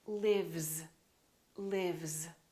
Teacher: This is a voiced sound, v, v. Therefore, this S is also going to be a voiced sound, which is a Z, lives, lives.